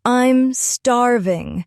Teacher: It usually comes with strong emphasis on starving.